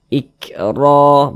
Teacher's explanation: huruf ro dibaca takimah Dibaca te bal sehingga pangkalisan kita itu naik terangkat ke atas ketika Kita mengucapkannya huruf rnya kita tebalkan